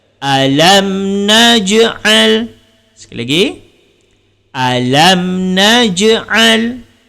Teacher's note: Jim termasuk huruf qalqalah. Dan bila berada di tengah, dia termasuk qalqalah sughra.